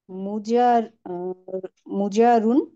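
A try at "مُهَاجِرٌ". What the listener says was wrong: আপনি আগে জিম নিয়ে আসতেছেন কেন, আগে হা বাদ। একালিফ কিন্তু ঠিক রাখতে হবে, মুহাজিরুন।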